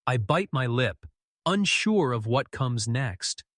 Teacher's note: Emphasis make unsure breathy